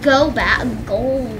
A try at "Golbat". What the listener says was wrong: I keep hearing it like you're saying Gobot, which is a thing that I was into when I was your age.